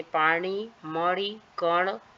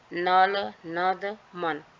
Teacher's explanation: दूसरा दंतव्य है। एक है तालू की जड़ या जीभ की नोक को मोड़कर किया जाता है। और दूसरा है दांत की नोक जीभ की नोक को दांत के पास ले आकर किया जाता है। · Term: मूर्धन्य